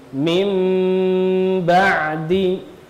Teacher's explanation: Nah, ini menunjukkan diganti mim. Kemudian cara membacanya adalah tempelkan dua bibir kita tanpa menekan, ya. Kemudian disertai dengan gunna. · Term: iklab